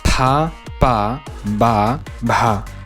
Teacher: In many Indian languages, for example, you differentiate between voiceless aspirated, voiceless unaspirated, voiced unaspirated, and voiced aspirated consonants